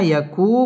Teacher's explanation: মদ তাবাই পেশের বাম পাশে জজম ওয়ালা ওয়াও একালিফ টেনে পড়তে হবে